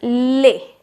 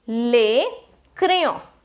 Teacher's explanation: Now the S is silent, the last S will be silent. It will be pronounced as lay in French